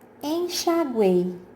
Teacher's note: é um grupo de três vogais em uma única sílaba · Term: tritongo